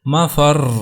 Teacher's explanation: یقول الانسان یومئذ این المفر، مفر، تو ہم نے یہاں پر مفر را کو ساکن تو کیا لیکن اس کے اوپر شدہ کو قائم رکھا، یعنی اس کو سختی کے ساتھ پڑھا